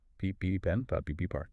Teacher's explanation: The P is a voiceless bilabial plosive. Your vocal cords do not engage at all. They just remain completely open and relaxed. · When you finally part your lips to say P, all that high-pressure air forcefully aspirates. It creates a sudden, explosive puff of air bursting out of your mouth. · my throat is completely still. There's zero vibration.